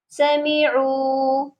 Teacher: عین کے ساتھ واو مدہ ہے، اس کو بھی ہم نے لمبا کر کے پڑھنا ہے